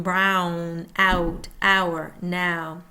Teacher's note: Tongue starts low, moves high back